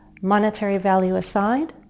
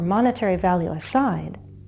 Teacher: at the beginning we can have a low rise or a fall rise.